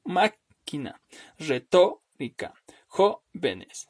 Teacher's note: la sílaba tónica se va a ubicar en el antepenúltimo lugar